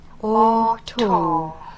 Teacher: this sound is a back vowel, almost in the middle of the mouth. It's a little higher than the middle, and it is rounded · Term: O sound